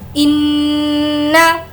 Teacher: इन्ना नून पर तजदीद है गुन्ना करेंगे